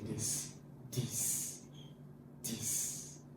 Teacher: the tongue touches the upper teeth while producing a vocal sound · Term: voice